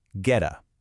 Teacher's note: the T in get a is between vowels, so it flaps. It becomes getta.